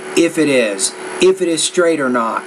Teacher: the T needs to be blended to the first sound of the next word